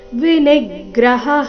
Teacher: ನಿ ಮೇಲೆ ಆಘಾತ ಹ ನಂತರ ವಿಸರ್ಗದ ಉಚ್ಚಾರಣೆ